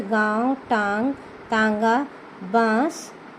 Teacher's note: वायु हमारी नाक से भी निकलेगी, नासिका से भी निकलती है और मुंह से भी निकलती है